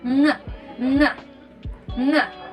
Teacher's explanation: N sound is a voiced velar nasal wherein it produced or the sound produced when oral passage is blocked by pressing the back of our tongue against the soft palate and escapes the air escapes through our nose and vocal cords vibrates.